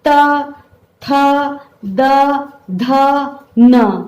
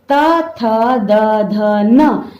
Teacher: ऊपर के दांतों पर जीभ लगने से जिनका उच्चारण होता है वे दंत हैं